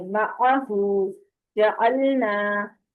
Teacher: عین کو پراپر وسط حلق سے نکالیں